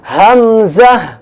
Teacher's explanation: حمزہ بھی وہیں سے ادا ہوتا ہے جہاں سے ہا ادا ہوا ہے, گلے کے تیسرے حصے سے